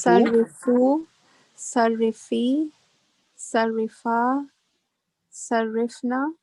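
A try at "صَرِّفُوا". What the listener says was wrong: Excellent. MashaAllah. Excellent.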